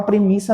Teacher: é um dígrafo que não Traz nasalização ele é oral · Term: dígrafo oral